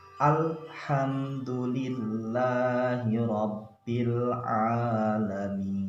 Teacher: Nah, dibiasakan lam ini bukan huruf qalqalah, artinya harus dibaca jelas